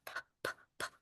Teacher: it starts with the two lips together, but it's a push of air. It's a pop.